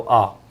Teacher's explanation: बाकी जो पश्च भाग बोला जाता है, पीछे पीछे आ बोलो, पीछे जाएगा वो आ